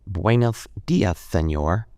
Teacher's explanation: They use a th sound in place of all the s sounds.